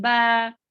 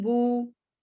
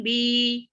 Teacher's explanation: अल जौफ यानी कि 3 हुर्फ अलिफ वाव या भी जो है मुंह के खाली हिस्से से अदा होने वाले हुर्फ हैं